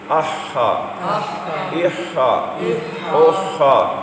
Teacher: ہا حلق کے درمیان سے